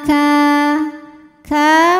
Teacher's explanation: ka ka ma thii dahiri karena ada Alif didahului harakat fathah maka Kaf panjang dua harakat